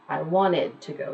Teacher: you won't really hear the T but you will hear the entire syllable being pronounced